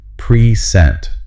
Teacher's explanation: it's a verb, and the stress is on the second syllable